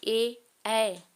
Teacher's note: अ और इ के मिलने से बनते हैं तो इनका उच्चारण स्थान होता है कंठ और तालू क्योंकि अ जो है वो कंठ से और इ जो है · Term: कंठ तालव्य